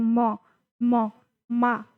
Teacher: तो ये ओष्ठय हो गया प्लस नासिक। जब हम म बोलते हैं म मा तब हमारा नाक से भी ध्वनि निकलती है। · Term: नासिक्य